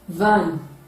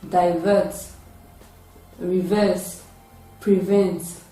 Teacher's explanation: So it is a voiced, labiodental, and fricative sound.